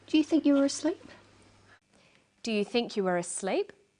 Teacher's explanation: her voice goes up at the end of the sentence we call this a rising tone the rising tone is used for yes no questions questions that